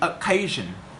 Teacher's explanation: we pronounce occasion with the word stress put on the second syllable